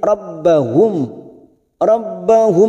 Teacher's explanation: mim sukun bertemu lam idhar safawi dibaca jelas tanpa mendengung